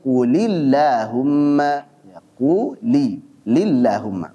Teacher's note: kemudian Allahumma juga kalau sebelumnya kasrah seperti quulillahumma ya Qui lillahumma maka lam pada Allahumma dibaca tipis pula